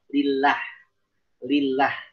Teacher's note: Jelaskan tipis pada lafzul jalalah karena dia sebelumnya kasroh.